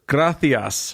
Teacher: it's a hard s at the end, but it's a th sound · The lisp thing is really interesting because they don't lisp all of the S sounds. They do C's and Z's. They don't do S's.